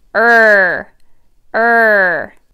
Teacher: up and tight as you turn your voice on er er if your tongue isn't high enough or isn't tight enough it's not going to sound quite right it's going to sound like uh instead of er